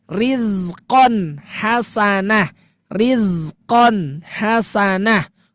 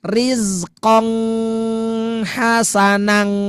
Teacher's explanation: Tuh, pakai in, bukan ing, bukan yang lainnya, tapi dia benar-benar in ya.